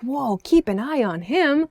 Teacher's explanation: an upward intonation kind of happy like whoa keep an eye on him he's doing exciting things